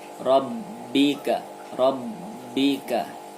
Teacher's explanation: huruf ba' bertasydid maka dibaca double dan Qolqolah Sugro